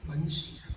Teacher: આ બંસી શબ્દ જે છે ને એ ઓષ્ટ્ય વર્ડ છે તમે બોલો એટલે બે હોઠ ભેગા કરવા જ પડે